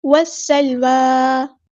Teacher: سین کی سیٹی واضح کرنی ہے کیونکہ حروف صفیریہ میں سے ہے ، اور لام ساکن کو ہلانی ہے، واو پہ کھڑا زبر